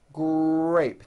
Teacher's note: the R sound is the strongest sound of the blend, and your lips often come forward before you even say the word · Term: R blends